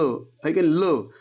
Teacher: ल म्हणताना मूर्धेला त्या ठिकाणी आपल्या जिभेचा शेंडा लागतो आणि हवा जी आहे ती दोन्ही बाजूने निघून जाते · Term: पार्विक व्यंजन